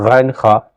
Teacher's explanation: عین، ہا، یہ دونوں ایک ہی جگہ سے ادا ہوتا ہے، یعنی حلق سے ادا ہوتا ہے۔ غین، خا، یعنی حلق کے اگلے حصہ سے غین اور خا دونوں ایک ہی جگہ سے ادا ہوتا ہے۔